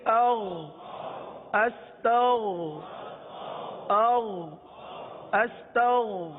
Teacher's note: تو اب اس میں عموماً جو ہے غین کے بجائے گاف کی ادائیگی کرتے ہیں، استغفر اللہ، استغ نہیں، غین ہے حلق کے اوپر والے حصے سے ادا ہوتا ہے، غین کو پر ادا کرتے ہیں